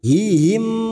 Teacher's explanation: mim sukun bertemu ta dibaca jelas tanpa mendengung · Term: Idhar syafawi